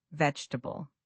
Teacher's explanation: It sounds like veal or even vel. The middle syllables blend together. · Learners often say vg tabi with four syllables, but native speakers say vegetable with three syllables or sometimes even just two. It sounds like veal or even vel.